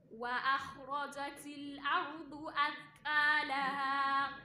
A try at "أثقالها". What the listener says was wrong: فخم القاف أثقالها